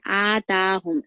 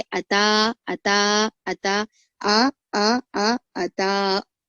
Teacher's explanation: अताहुम में ता खींचना है, हमजा को नहीं खींचना है, पर अक्सर लोग कैसा पढ़ते हैं, अक्सर लोग आताहुम पढ़ते हैं, आताहुम, ऐसा नहीं, आताहुम नहीं बल्कि अता, अता, अता, आ अता, इस तरीके से आपको पढ़ना है।